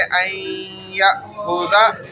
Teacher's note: این میں دیکھیں نون کا غنہ ظاہر ہو رہا ہے